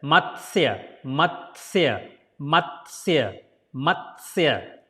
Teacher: T is almost like silent.